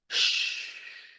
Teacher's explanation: the sh this time is voiceless. So you can't hear any vibration in your vocal cord.